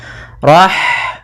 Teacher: ada H sukun maka di sini H mempunyai sifat yaitu sifat Hames maka alirkan nafas kita